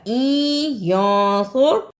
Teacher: صاد کو موٹا پڑھنا ہے